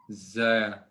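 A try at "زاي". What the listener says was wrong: Not just za for fatha, the letter's name now. Zay. Yes, you can say za with fatha, and for letter's name, you will say zai.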